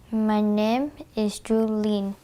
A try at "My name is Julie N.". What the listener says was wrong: It's the diphthong in that name. They don't have that in her language.